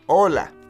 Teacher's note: be aware that the H in Spanish is silent